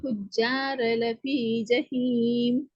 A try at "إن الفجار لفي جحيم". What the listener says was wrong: புஜ்ஜா, புஜ்ஜ, புஜ்ஜ, புஜ்ஜ, ஜா அல்ல ஜ. وإن الفجار لفي جحيم.